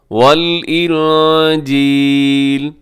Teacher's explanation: یہاں نون ساکن کے بعد جیم ہے تو یہاں پہ آپ اخفا کیجیے گا